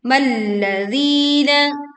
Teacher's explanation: di dibaca panjang 2 harokat